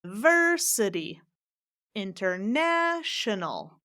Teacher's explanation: there's two words there that are five syllables and it happens to be that both of them stress the third syllable